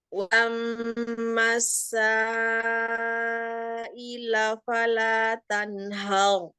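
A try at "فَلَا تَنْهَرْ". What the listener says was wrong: Tanhar. hanya tipis. Fala tanhar. Hanya tipis. Fala tanhar, jangan haru. Hanya jadi ikutan tebal. Ro-nya aja. Tanharu. Haru.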